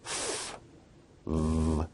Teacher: Labiodental sounds are produced with the upper teeth and the lower lip, such as f, v.